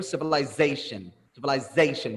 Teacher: we place the stress on the syllable before the last one which is called like penultimate syllable